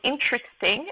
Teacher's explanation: the stress is on the first syllable uh which is longer and louder than the others · there are really three syllables in pronunciation not four as it might seem when you're reading the word and then the stress is on the first syllable uh which